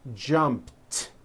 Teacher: jumped with a t sound at the end jumped of course the word is spelled with an e d ending it's just pronounced as a t